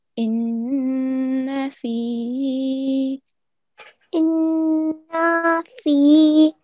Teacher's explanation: on top of noon, we have tashdeed. So we have to hold the nasal sound for 2 seconds